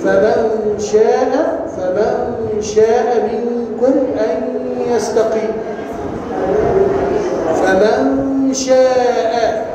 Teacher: اللي حصل ان انا اخفيت مخرج النون وابقيت غنتها، خدت بالك، لوقوع الشين ايه بعدها، لوقوع الشين ايه. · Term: اخفاء